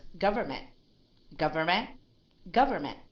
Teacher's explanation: If I read this word as without a T, you will still know what it is.